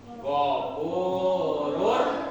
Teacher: Jadi ini mah enggak pakai gunah, enggak dengung, langsung. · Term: idgham bila gunah